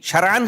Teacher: عین نہ پورا حلق سے نکلتا ہے